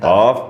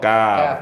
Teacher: Pangkal lidah paling belakang kof, sedikit ke depan. Kaf. Kemudian tengah lidah bertemu dengan langit.